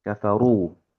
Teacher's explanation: Kafaru di sini huruf ro-nya tebal ya karena eh, ro-nya sendiri itu harokatnya domah ya.